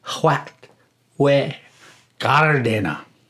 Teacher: That the R in gardena should be slightly rolled, and the first syllable of gardena should be a noticeably longer syllable than any other in that word. The de in gardena should be spoken like day, the day in which we are experiencing ourselves right now, but cut off just a bit short.